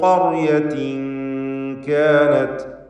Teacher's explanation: ഖർയത്തിൻ എന്നതിലെ തൻവീനിനെ ശേഷം കാഫ് വന്നതിനാൽ ഇഖ്ഫാ ഹഖീഖി നൽകി മറച്ച് മണിക്കുകയാണ്. എന്നാൽ തർക്കീഖോട് കൂടിയുള്ള മണിക്കലാണ് വേണ്ടത്.